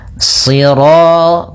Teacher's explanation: Karena shad itu pangkal lidah kita terangkat dan melekat karena dia huruf idbaq siro. Kemudian rnya ro tafkhim.